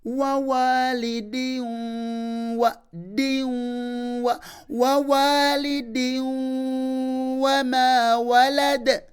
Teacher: Kati agamba nti atanwinu fi wa walidi eno tanwini eno jaa ba'dahu harful waw wazze ennyukuta ya waawu then nekubera nga okulamula kwa tanwini eno efuuse ya idghamu bi ghunnatin nti olina jibuliza mu waawu nga bw'owuna